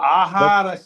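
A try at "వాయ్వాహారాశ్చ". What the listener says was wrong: ఇక్కడ ఆహారాస్చ అంటే ఆహారంగా ఆ దీర్ఘం ఉండాలి రాకు దీర్ఘం అండి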